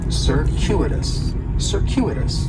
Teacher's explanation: In the first syllable, that C is going to have more of an S sound, circuitous. The stress is going to be on that second syllable, and that CU it's kind of like you're saying the letter Q, circuitous.